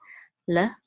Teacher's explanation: this is a shva, so we're just gonna say a quick l sound, okay? Because the shva is at the beginning, at the word, we're gonna pronounce it, l.